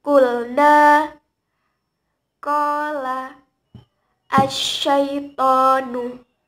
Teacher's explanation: Panjangnya hanya 1 alif atau 2 harokat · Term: Mad tabi'i